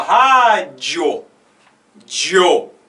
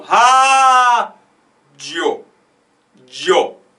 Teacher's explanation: Então, por exemplo, na palavra rádio, você fala rádio, dio. O O é mais forte na pronúncia do que o I. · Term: crescente